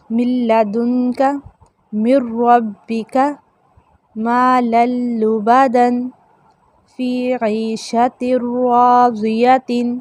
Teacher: آپ لام اور را میں ناک میں آواز لے کر جانا بھی چاہیں تو نہیں جاتی، یعنی بغیر غنہ کے ادغام ہوتا ہے۔ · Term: ادغام بلا غنہ